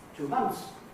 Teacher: We leave the th out, we don't leave the S out, right? So keep the S, keep the sign of the plural, and say 2 months.